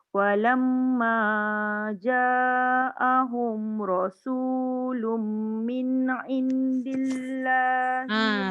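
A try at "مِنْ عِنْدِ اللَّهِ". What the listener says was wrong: Min tidak dengung. Yang nun tadi tidak boleh dilekatkan di langit tu. Ya, tengok pada tanda lah. Nun kalau kosong tak ada tanda, dengung lah.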